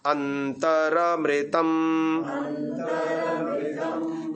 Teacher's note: र में जो अ है वो स्पष्ट आना चाहिए